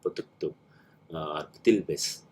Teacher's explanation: some dialects change the voice of the prefix ba to the voiceless p